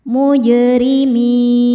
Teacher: Ra dibaca tarqiq karena harokatnya di bawah, maka bacanya tipis.